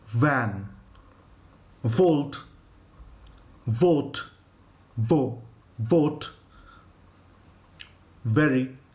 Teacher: to pronounce the V you have to again bite your lips with your teeth and use the voice